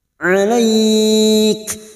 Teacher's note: huruf Kaf ini memiliki sifat hams